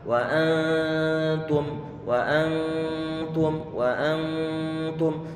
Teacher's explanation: ditahan suara dengungan sambil berusaha untuk dekatkan lidah kita ke tempat keluarnya huruf ta. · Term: bacaan ikhfa